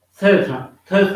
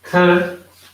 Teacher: it is dental in the sense that the tip of the tongue touches the back side of the upper front teeth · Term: dental sound